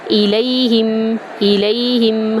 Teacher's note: لام کو یا میں داخل کریں گے، یہ حروف لین ہے، اس کو لمبا نہیں کریں گے